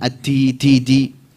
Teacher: Huruf dal jangan ada hamesnya, jangan ada kuahnya.